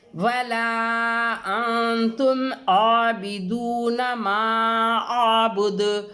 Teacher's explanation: جو ہم نے اس سے پہلے والی آیت پڑھا سیم وہی چیز ہے یہاں پہ بھی, وہی ہے مد منفصل, وہی یہ جو نون ہے یہ حرف تا جو حروف اخفا میں سے ہے, اس لیے نون ساکن کو ہم اس کی آواز کو ناک میں چھپا کر پڑھیں گے